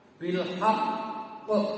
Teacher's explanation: itu qalqalah, tetapi ada tasdid di atasnya, maka menjadi ditahan dulu.